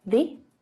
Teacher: this word is not usually stressed, so you don't hear it pronounced like the very often. You'll hear a shorter version, the, and also you'll hear the. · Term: unstressed forms